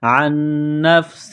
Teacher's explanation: ہے تو تنوین پر غنہ نہیں کریں گے، نفس عن نفس، نون ساکن کے بعد نون ہے جو مشدد ہے تو آواز ناک میں چھپائیں گے ، عین کو نون کے ساتھ پلس کریں گے، عن نفس،